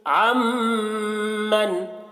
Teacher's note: عین میم کے ساتھ پورے طور پر مل رہا ہے، تو یہ ادغام تام ہے، نون کو بالکل بھی نہیں پڑھا جا رہا